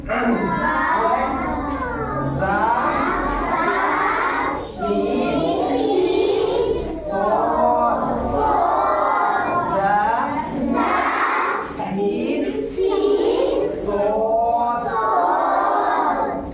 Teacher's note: दांतों को बंद करके जबान अंदर रख करके फिर सीटी की आवाज निकाल करके उन 3 हर्फ को अदा किया जाता है